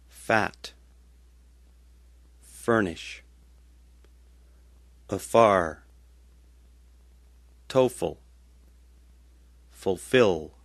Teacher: put your top teeth onto your bottom lip and make a sound exactly like V, except make it voiceless